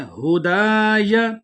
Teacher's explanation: دال کو ایک الف کی مقدار لمبا کر کے پڑھیں گے کیونکہ آگے الف مدہ ہے